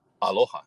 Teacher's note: It transforms from a T sound to a K sound, and from the K sound to what's the glottal stop